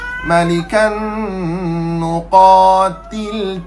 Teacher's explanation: Tanwin bertemu dengan huruf nun, apa hukum dia? Nun. Tuan-tuan sekalian, idgham ma'al gunnah, masuk dan dengung. Malikan nuqatil, bukan til fi sabilillah.